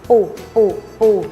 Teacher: ให้ห่อริมฝีปากพร้อมทั้งให้ริมฝีปากบนและล่างปิดชิดกัน พร้อมเปล่งเสียงปุปุปุแล้วออกเสียงปู▁ปู▁เป็ดให้เหยียดริมฝีปากพร้อมทั้งให้ริมฝีปากบนและล่างปิดชิดกันและเปล่งเสียงเปะเปะเปะพร้อมพูดว่าเป็ด▁เป็ด▁คำที่ขึ้นต้นด้วยเสียง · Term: ปอปลา